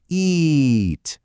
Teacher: To say it right, it requires a big smile and a long stretch of sound. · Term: long I